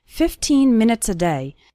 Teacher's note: Remember to pronounce the second syllable of 15 nice and strong. 15, not like 50, which is a different number.